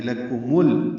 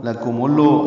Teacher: لام ساکن ہے، اس پہ اظہار ہوگا، قلقلہ نہ ہو